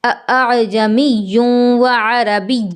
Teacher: اب یہ جو پہلا حمزہ ہے جو کہ حمزہ کی ہی صورت میں ہے اسے جھٹکے سے پڑھیں گے، اور دوسرا حمزہ جو الف کی صورت میں ہے یہ ہم الف کی طرح بالکل آرام سے پڑھیں گے بغیر جھٹکا دیے